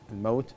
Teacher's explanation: الملاحظة الثانية كذلك تفخيم المستفل، الواو الموت، الموت الواو حرف لين فينبغي أن يكون حرف مستفل وتعطيه الاستفال